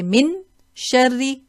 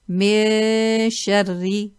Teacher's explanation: We hide the noon, conceal the noon. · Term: ikhfa haqiqi